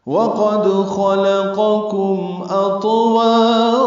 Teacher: واو ہونٹوں کی نا تمام گلائی سے ادا کریں گے